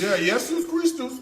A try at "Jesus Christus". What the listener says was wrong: Yeah, that's the one.